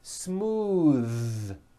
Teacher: believe it or not the th sound in smooth is voiced